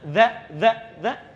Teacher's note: singkatnya lidahnya digigit sedikit